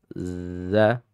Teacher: Sifatnya memang rakhawah dia. So, agak terseret gitu ya.